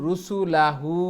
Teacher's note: রুসুলাহু এখানে লং হবে না, হু লং হবে